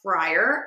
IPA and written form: ˈfraɪər (friar)